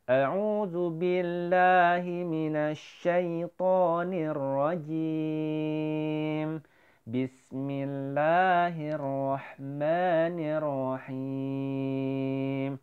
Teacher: Nada yang pertama naik, nada yang kedua turun. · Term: nagom ros